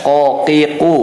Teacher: Pangkal lidah menempel kepada langit-langit lunak itu untuk huruf qaf ya. Qaqiqu menempel kepada langit-langit lunak.